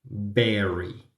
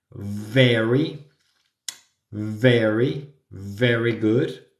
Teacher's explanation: bilabial que quiere decir bilabial que junto los labios y la v es vibra